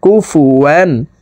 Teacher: তানউইনের পর ইজহারের হরফ হামজা আসছে, এই কারণে এই তানউইনওয়ালা ওয়াওটি গুন্নাহ সারা স্পষ্ট করিয়া পড়তে হবে।